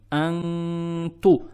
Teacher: Далее следует буква « та» с даммой. Мы не расширяем дамму.